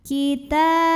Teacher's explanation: Maka cara membunyikannya, alif lamnya ini tidak kita baca, melainkan langsung kita masukkan ke lam berikutnya, diidghamkan. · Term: alif lam syamsiyah